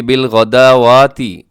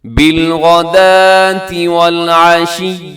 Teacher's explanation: تو کئی دفعہ ایسے ہوتا ہے کہ بالغداواتی ایسے پڑھ دیا جاتا ہے، تو آپ نے دیکھنا ہے کہ صرف اس میں دال کو اپنے ادا کرنا ہے، واو کو اپنے بالکل چھوڑ دینا ہے